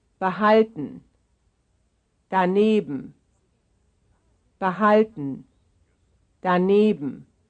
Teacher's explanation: these two very different words, which belong to the same stress family because their stress is on the same syllable, the second to last syllable.